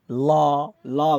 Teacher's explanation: पार्श्विक भनेको चाहिँ जिब्रोको दुवै छेउबाट सास बाहिर निस्किने